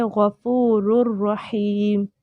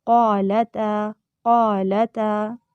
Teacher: تو غین جیسے موٹا ہو رہا ہے، قاف زیادہ موٹا ہوا تھا غین کی نسبت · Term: تفخیم